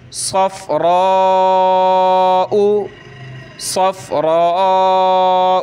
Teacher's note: بقرۃ صفراء، بقرۃ صفراء، صاد نکالیں، سین ہوتی ہے پتلی اور صاد موٹا کر کے پڑھا جاتا ہے سیٹی کی آواز نکال کر · تو صاد کو فا کے ساتھ ملانا ہے، را کو ہم نے کھینچنا ہے مد کی وجہ سے